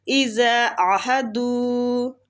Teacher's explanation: عین کو کھینچیں گے اور وسط الحلق سے نکالیں گے ، دو وہ مد ہے کھینچیں گے۔ وَالصَّابِرِينَ صاد کو کھینچیں